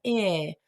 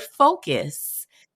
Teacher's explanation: a neutralized version of the short I sound. So it's like eh, like the last vowel sound that we hear in the word focus. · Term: schwa